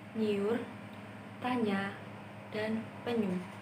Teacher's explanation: konsonan nya yang merupakan konsonan nasal palatal bersuara. Konsonan ini dilambangkan dengan grafem N dan Y.